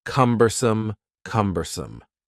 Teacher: The word cumbersome has 3 syllables, and the stress is on the first syllable